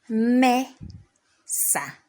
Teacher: So I raise my voice at me, and then I lower my voice at sa. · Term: word stress